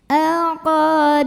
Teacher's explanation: Karena ada mim sukun yang menghadapi huruf selain mim dan ba, yaitu huruf ain. Cara membaca mim sukunnya adalah diidharkan atau dibaca dengan jelas bunyi M-nya. · Ala qa mad tabi'i karena ada alif yang didahului fathah. Maka dibaca panjang qafnya 2 harokat saja. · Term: idhar syafawi